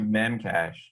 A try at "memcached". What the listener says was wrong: Well, first of all, it's not Memcache. It's Memcache D. There's a D on the end. That's how you pronounce it. It's Memcache D.